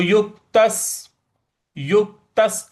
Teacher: त के बाद जो आधा स है उस पे भी हमको हल्का बल लगाना है